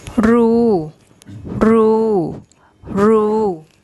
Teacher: the long ooh vowel and no final consonant